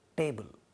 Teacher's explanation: in indian english would really become ta which is a retroflex sound